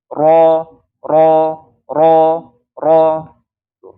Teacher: Jadi keluarnya lewat ujung lidah, bukan punggung lagi, tapi ujung lidah. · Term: huruf ro